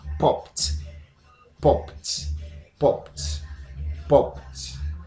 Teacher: because P is an example of voiceless sound, this should be pronounced with a T sound. So it's going to be popped, not popped.